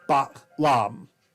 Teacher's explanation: it's supposed to have ba and then a glottal stop, and then lam